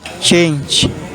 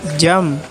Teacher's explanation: Affricates can be viewed as a combination of two sounds which are pronounced pretty much simultaneously. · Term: sibilant affricates